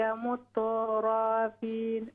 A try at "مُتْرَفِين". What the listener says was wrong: Yeah, مترفين. Yeah, we don't pause between ta and ra.